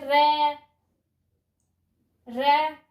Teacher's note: लुंठित वे शब्द होते हैं जिनका उच्चारण करते समय हमारी जीभ अंदर की ओर लुढ़कती है। लुंठित वे शब्द होते हैं जिनका उच्चारण करते समय हमारी जीभ अंदर की ओर लुढ़कती है, इसलिए हम इसे र को लुंठित व्यंजन कहते हैं।